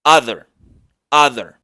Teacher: la o no se pronuncia como o del español se pronuncia con un sonido muy relajado en donde solo se baja la mandíbula ligeramente